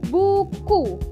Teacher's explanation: Nah, U yang pertama tuh kita ke U kecil terlebih dahulu. U ini posisinya itu tinggi atas. belakang dengan posisi mulut tertutup.